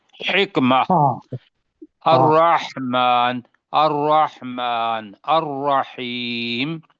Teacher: ہا جو ہے وہ پورا گلا کھول کے اس میں سے ہا کو باہر نکال دینا ہے